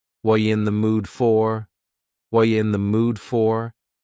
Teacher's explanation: The word are is gone. And the word you has been reduced to yah. So when we link together, what and you super fast. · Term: reduction